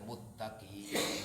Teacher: Mustaqim dibaca muttaqim. Mus itu bukan idgham tapi dia ganti sinnya menjadi ta. Akhirnya tercipta idgham.